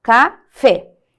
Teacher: na palavra café café esse fé aqui é minha sílaba tônica